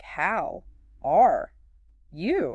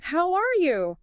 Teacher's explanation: maybe a slight rise on are and then falling on you delivered with a generally warm vocal quality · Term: friendly intonation